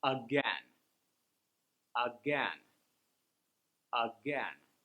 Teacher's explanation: that first sound, 'uh', is the schwa sound.